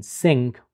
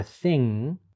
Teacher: the airstream is stopped with the back of the tongue at the velum and the air comes out the nasal cavity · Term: velar nasal